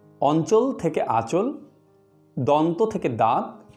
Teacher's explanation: ধ্বনি পরিবর্তনের এই দৃষ্টান্তগুলিতে নাসিক্য ব্যঞ্জন স্বয়ং লুপ্ত হয়েছে এবং তার পূর্ববর্তী স্বরধ্বনিটি দীর্ঘ ও সানুনাসিক হয়েছে। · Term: নাসিক্যী ভবন